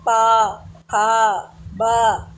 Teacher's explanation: आपके दोनों लिप आपस में टच होंगे।